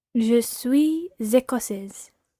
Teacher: Try to run the Z of je suis écossaise on.